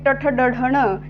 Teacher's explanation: या वर्णांचा उच्चार करत असतानी ध्वनीचा उच्चार करत असतानी आपल्या जिभेचा मूर्धेला स्पर्श होतो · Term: मूर्धन्य